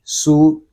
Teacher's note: سین پیش سو. سین حروف صفیریہ میں سے ہے، اس میں سیٹی کی آواز بھی آئے گی